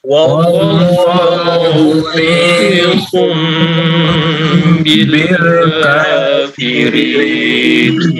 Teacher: Wallah tebal, lam tebal, lafzul jalalah. Wallahu muhitun, to-nya tebal.